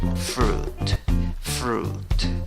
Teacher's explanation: En la pronunciación solo tienes una U con 2 puntos, es decir, una U larga. Para eso tienes que tus labios redondearlos, trompita